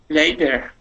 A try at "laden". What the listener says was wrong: Laden with with a n Sound